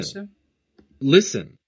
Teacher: Então a tônica está na primeira sílaba